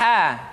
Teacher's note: dikeluarkan dari tengah-tengah tenggorokan